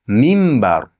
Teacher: Nun ba harfiga yo'l kelgan bo'lsa nima bo'ladi? Mimga almashib ketadi. Shuning uchun ham buni minbar deb o'qishimiz xato bo'ladi.